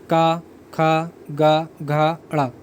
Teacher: स्पर्श व्यंजन, ये भी मैं आपको बता चुका हूँ। का वर्ग आपका कौन सा है, ये आपके कंठ से स्टार्ट होता है